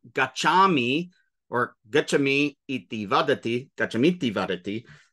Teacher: short I at the end of gachami and the short I in front of iti become one long I